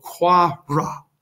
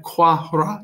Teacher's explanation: you're almost pretending the H isn't there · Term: elision